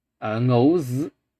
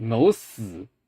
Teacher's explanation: the z onset gets devoiced